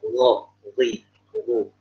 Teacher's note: kalau huruf ro dalam bahasa Arab dia di ujung tenggorokan. Ya, di ujung tenggorokan.